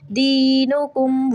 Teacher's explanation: دی یہاں پہ یا مدہ ہے، اس کو 3 سیکنڈ کے لیے لمبا کریں